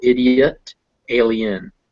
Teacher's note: is pronounced separately so idiot and alien uh both those vowels the o in idiot and the e in alien are both pronounced like schwas cause they're unstressed but those eyes are pronounced e because they're before another vowel